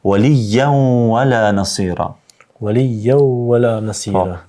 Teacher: kemi shembullin tjetër me tenwin, kur pasohet me waw, me të vërtetë duhet me pas kujdes që të shkrihet të bëhet idghami.